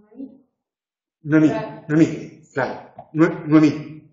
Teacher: Ponemos el acento en la E.